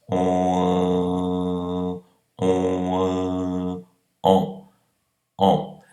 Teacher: O on é produzido a partir do o nasalizado, então muito parecido com on, e depois eu vou tirando o arredondamento labial.